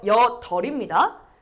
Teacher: 여덜은 우리 여덥이라고 많이들 하는데 앞자음대로 가야 돼요